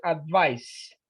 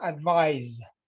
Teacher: The difference in pronunciation is the sound of the last consonant, the C and the S. This one you pronounce it advice with a S. And this one you pronounce it advise with Z.